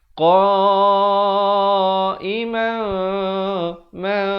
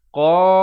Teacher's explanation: Mim yang nipis. Iaitu seakan-akan bibir itu hampir bersentuhan saja. Dengan kadar 2 harakat.